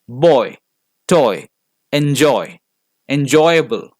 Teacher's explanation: the pronunciation begins in an O and ends in an e